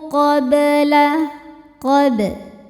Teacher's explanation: Huruf ba sukun dibaca hukumnya qalqalah sughra karena ba sukunnya asli ya dan berada di tengah-tengah bacaan. Dibacanya memantul, pantulannya kecil. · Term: qalqalah sughro